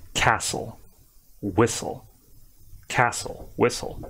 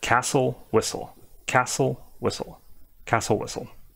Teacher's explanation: You don't need to be doing the T sound at all. Some other people might tell you like the T is like just barely present there, but I feel like it's just castle, whistle, castle, whistle, castle, whistle.